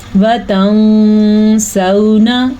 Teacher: اب میں نے یہاں غنہ بھی کیا اور نون کو چھپا بھی دیا · یہ واولین ہے، اس کو لمبا نہیں کرنا. واو ساکن سے پہلے زبر ہے تو یہ واولین ہے. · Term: اخفا